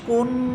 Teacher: দেখেন আমার আওয়াজটা নাকের বাসি থেকে হইতেছে, মুখ থেকে না। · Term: গুন্না